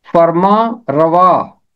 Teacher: ये फारसी जुबान से उर्दू में आया है और फारसी में नून के साथ पढ़ते हैं, मगर उर्दू में हम इसे नून गुन्ना के साथ पढ़ेंगे